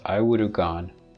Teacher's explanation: so naturally the H drops